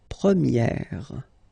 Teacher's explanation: And then for the feminine form, you will get première. Okay, so it's open, this eh sound.